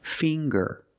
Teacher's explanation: We see the nasal sound, plus the hard G